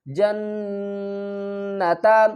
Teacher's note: جیم کو نون سے ملائیں گے، نون کے اوپر غنہ بھی کریں گے اور سختی بھی کریں گے۔